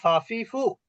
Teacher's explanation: নিচের ঠোঁট উপরের দাঁতের সঙ্গে স্পর্শ করবে। এই যে নিচের ঠোঁট উপরের দাঁত, এখানে ভিজা জায়গা আছে ঠোঁটের ভিতরে, এইখানে স্পর্শ করবে।